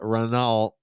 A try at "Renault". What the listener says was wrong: Because the a l is silent. It's more It's more uh French. They say it more French.